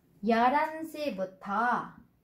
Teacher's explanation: H có thể đọc nhẹ đi hoặc là đọc lược luôn.